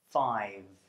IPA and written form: faɪv (five)